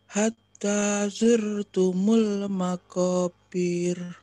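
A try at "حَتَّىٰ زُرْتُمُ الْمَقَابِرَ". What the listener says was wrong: Pendek, jangan bir. Makobirnya dua. Makobir. Makobir.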